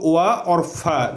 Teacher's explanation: व और फ का उच्चारण स्थान दांत और ओठ से होता है। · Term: दंतोष्ठ